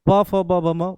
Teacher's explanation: प फ ब भ म ओष्ठ से बोलते हैं।